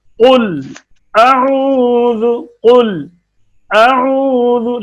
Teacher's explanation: لام میں آواز مکمل بند بھی نہ ہو اور جاری بھی نہ رہے